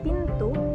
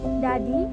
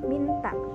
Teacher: ujung lidah menyentuh gigi dentum atas sebagai titik artikulasi. Contohnya pada saat kita mengucapkan bunyi T pada kata pintu, bunyi D pada kata dadi, dan bunyi N pada kata minta. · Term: bunyi apikodental